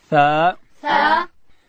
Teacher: ثا ادا کیږي چې کله د ژبې سر د لوړې زامې د مخ دو غاښو سرو ته د ژبې سر وروړو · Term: حرف ثا